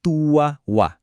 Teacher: Kita enggak baca gisyawatun walahum, tapi tanwin un itu melebur ke huruf waw menjadi tuawwa. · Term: idgham bigunnah